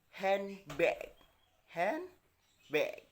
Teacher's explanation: The N sound in hand is assimilated with the following B sound, resulting the assimilation from handbag for a more seamless transition. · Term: consonant assimilation